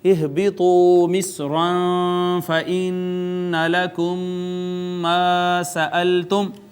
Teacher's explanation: ہا کا مخرج اقصی حلق ہے